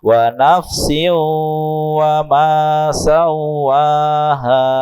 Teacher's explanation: Sebentar, ini namanya idgham bi gunnah. Ada tanwin ketemu dengan wawu, harus ada dengungnya.